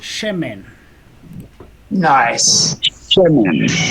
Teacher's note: Now this is our two segol rule, where again the first segol is the strong accent.